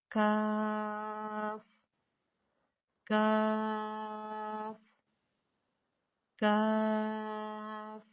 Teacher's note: کاف کو ادا کرنے کے لیے زبان کی جڑ کو کوے کے قریب تالو پر لگا کر باریک آواز میں پڑھیں۔